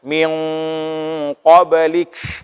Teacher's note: Jadi tidak terlalu berangin seperti itu. Dia berangin huruf K itu ketika sukun saja.